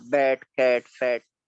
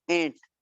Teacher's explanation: लेकिन एंट जब हम कहते हैं, एंट, चींटी, तो वही ए जो है ये ए हो जाती है, यानी एक ओरल साउंड जो है वो नेजल हो गई है ना साउंड की वजह से।